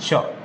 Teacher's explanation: श, स, क्या बोलते हैं? श, तालु से बोला जाता है, ठीक है, इसलिए तालव्य श